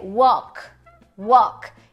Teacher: a gente tem o som de u u o o de avó só que ele é um pouquinho mais longo